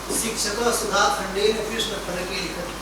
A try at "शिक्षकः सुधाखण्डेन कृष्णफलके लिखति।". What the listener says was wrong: बहु शीघ्रतया भवान् वक्तुं प्रयत्नं करोति। तेन उच्चारणे समस्या भवति।